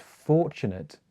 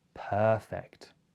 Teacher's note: I'm stressing the beginning for and sir and per, and it makes it much longer.